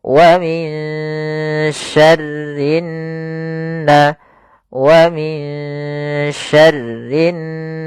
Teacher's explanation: Kita langsung ke huruf nun yang berharakat tasydid. Ini kita namakan dengan bacaan gunnah. Cara membacanya yaitu suara n-nya ditahan.